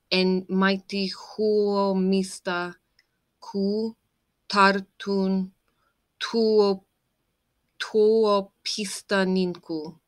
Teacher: The first stress is on the first syllable.